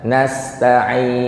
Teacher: Hilang nunnya. Harusnya nasta'in. Ada suara di akhirnya. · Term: huruf nun